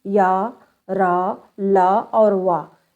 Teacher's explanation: इनका उच्चारण जीभ, तालु, दांत और ओठों के परस्पर सटाने से होता है, किंतु कभी कहीं भी ये पूर्ण स्पर्श नहीं करते हैं। इस चारों अंग जो है इसके जीभ, तालु, दांत और ओठ ये स्पर्श नहीं, यानी मतलब पूरा अभी छूते नहीं आपस में, ये केवल लगता है कि थोड़ा सा चलता है बस, इसलिए पूरा स्पर्श नहीं करते हैं। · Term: अंतस्थ व्यंजन